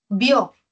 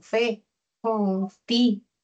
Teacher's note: Vio es un monosílabo y tiene mucha fuerza. Tiene acento de intensidad, acento oral.